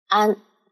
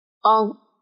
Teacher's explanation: 安的发音，它的力气是在口腔的前半部分，昂在后半部分